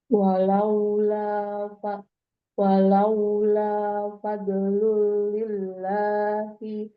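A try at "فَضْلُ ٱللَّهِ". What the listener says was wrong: fadlillah. Fadlullahi. Langsung. Enggak, Umi. Enggak ada lin ya. Fadlullahi.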